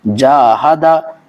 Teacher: جاہدا، جاہدا نہیں کریں گے یا جہادا نہیں کریں گے، یہ دونوں بھی غلط طریقے ہیں۔ صرف ہمیں جیم الف زبر جا کو کھینچنا ہے اور ہا اور دال کو جلدی پڑھیں گے، جیسے کہ جیم الف زبر جا، اس کو ہم کھینچیں گے۔